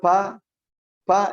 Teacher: Huruf ba kalau betul kita sebutkan syiddah kuat, bibir menempel kuat, ba, tidak mungkin keluar nafas. Tapi kalau sudah pa itu keluar nafas, jadi huruf P dia. Itu berarti syiddahnya kurang.